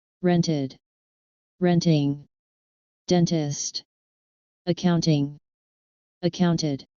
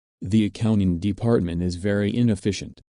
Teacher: notice again that the t is dropped when speaking fast